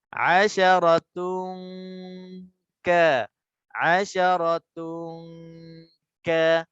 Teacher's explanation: Sebelum nak habis dua harakat, kita nak kena isyaratkan huruf selepas tanwin tu adalah huruf kaf. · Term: ikhfa